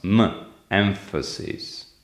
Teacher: for a mechanism of assimilation the nasal sound becomes as well labiodental